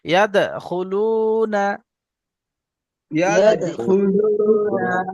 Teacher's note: ওর আই, ورأيت ওর আই, ورأيت ورأيت الناس ورأيت الناس يدخلون، يدخلون দাল কলকলা হবে, এই দালটি কলকলা হবে, দালের উপর সাকিন এসছে।